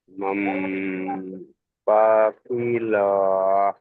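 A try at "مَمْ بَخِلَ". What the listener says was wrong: আচ্ছা, সব জায়গায় টান দিচ্ছেন, সব জায়গায় টান হবে না। এই দেখেন, এখানে হারাকাত রয়েছে, বা হারাকাত, এখানেও হারাকাত, এখানেও হারাকাত, হারাকাতের পরে টান বিনা টানে পড়তে হয়, আপনিই জানেন। মাম পাখিলা, পাখিলা বলেন। হ্যাঁ, মাম পাখিলা। হ্যাঁ, চলেন বানান করেন। না, নুনের উপরে সাকিন আছে, আমি বলেছি সামনের দিকে খেয়াল করতে হবে আপনাকে।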